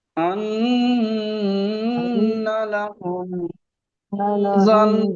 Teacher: আন্না, এখানে নুন তাসদিদ অজীব গুন্না গুন্না করতে হবে